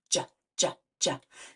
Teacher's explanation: So it's a stop sound, which means we can't stretch it out, but it is a voiced sound. J, J, J. So when I make that J, J, J sound, I feel my vocal cords buzzing.